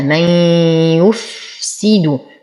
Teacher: نصبر على الفاء، نتم كسرة السين وضمة الياء والدال